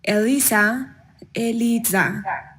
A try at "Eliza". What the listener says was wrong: Eliza or Eliza. So I think in lesson 20, your focus is that Z, making sure that you're pronouncing that with a little bit more vibration than what you're doing. Lies, zip, zoo, maze, Eliza.